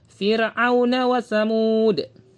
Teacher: fir tipis rahang kita diturunkan